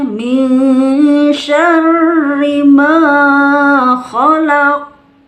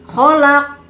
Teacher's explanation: Karena mantulnya di ujung ayat karena diwakofkan maka jadi qalqalah kubro.